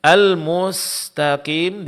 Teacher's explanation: Di sini huruf sin hati-hati jangan ditebalkan.